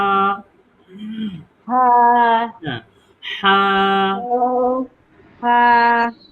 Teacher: তো এই হয় এখানে হা, এটা না, আমাদেরকে একটু চাপ দিয়ে বলতে হবে ভিতর থেকে। কণ্ঠনালীর মাঝখান থেকে উচ্চারণ করতে হবে।